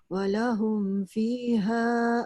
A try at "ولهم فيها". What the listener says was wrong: panjang sikit. Walahum fiha panjang.